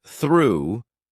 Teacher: in the word through, the tongue is high, the lips are slightly rounded.